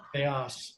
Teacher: Accent in the second syllable